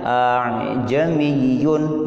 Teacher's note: Hamzah kedua letakkan antara makhrajnya ha dan ain. Artinya apa? Artinya si hamzah kedua tidak nampak gitu. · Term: Tashil